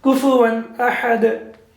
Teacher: Now we will not recite it like Kufuwan Ahad. No, there will be no prolongation and there will be no nasal sound.